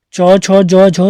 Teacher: तो च वर्ग के चारों वर्ण चले जाते हैं स्पर्श संघर्षी के अंतर्गत। स्पर्श तो है लेकिन संघर्षी भी हैं।